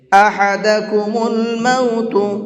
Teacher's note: حا کو حلق سے نکال کر کے پڑھیں گے